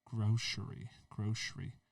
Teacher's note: you really put an sh sound on that c